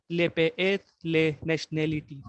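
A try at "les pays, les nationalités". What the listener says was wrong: Et les nationalités. आपने शीन की आवाज दी, सीन की आवाज देनी. nationalité. ठीक है, nationalité. फ्रेंच में नेशन जो होता है वो nation होता है.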